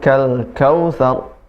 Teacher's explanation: thar tebal karena huruf ra disukunkan. dan sebelumnya harokatnya fathah.